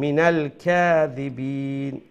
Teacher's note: কাফটা হচ্ছে চিকন করে উচ্চারণ করতে হবে ঠিক আছে নক্তা ছাড়া যে কাফ যেটাকে আমরা ছোট কাফ হিসেবে